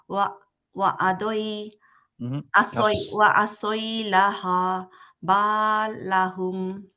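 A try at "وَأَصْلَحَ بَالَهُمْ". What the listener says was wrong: আসই কেন হলো? কাসরা নাই।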